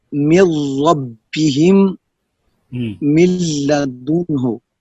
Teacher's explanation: نون ساکن اور نون کا ادغام لام اور را میں تام ہوگا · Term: ادغام تام